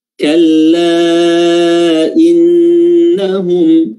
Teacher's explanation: Nun tasydid ini mengandung gundah, mengandung dengung, ya, yang dengan dengung tersebut ketika dia bertasydid kita harus menambah durasi tasydidnya.